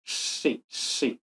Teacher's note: la s con la punta de la lengua hacia arriba